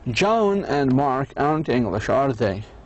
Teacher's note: the intonation of the tag question is falling down